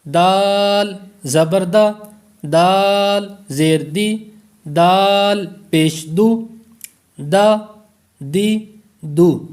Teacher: یہ تین حروف ہیں، ان کا ایک ہی مخرج ہے، تا، دال اور تا. زبان کی نوک اور اوپر کے دانتوں کی جڑ سے یہ ادا ہوگا